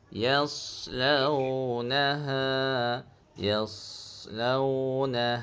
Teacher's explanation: Jadi pada huruf sad ni cili a dia huruf yang bersifat istiak dia tebal sikit. Nah yas pangkal lidah tu kita angkat sikit.